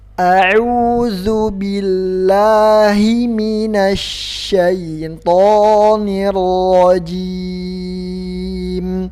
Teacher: Kalau makhraj shin itu di lidah bagian tengah ke langit-langit atas bagian tengah.